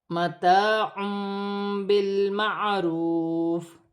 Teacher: یہاں بھی الف مدہ ہے، دو پیش کی تنوین کے بعد باری ہے، یہاں چھوٹی سی میم لکھی ہوئی ہے۔ دو پیش کی تنوین کی آواز کو میم سے بدل کر غنے کے ساتھ ادا کیا جائے گا، اسے اقلاب کا قاعدہ کہتے ہیں۔ · واو مدہ بن رہی ہے، ایک الف کی مقدار کھینچ کر پڑھا جائے گا